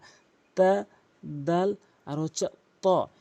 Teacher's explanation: এই ৩টি হরফ সেম উচ্চারণ হয়, জিহ্বার আগার সামনে ২টি দাঁতের গোড়া